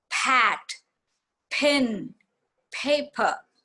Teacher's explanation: So there is more of an aspiration, more air is coming out. This aspiration varies from country to country, from words to words. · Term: aspirated